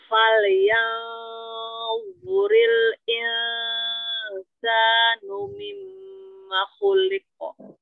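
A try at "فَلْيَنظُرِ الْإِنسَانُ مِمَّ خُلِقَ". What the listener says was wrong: Lam sukunnya jangan terputus, bainiyah inhirafnya jelaskan. Ada dua lam sukun. Selesaikan, sempurnakan sifatul huruf pada lamnya.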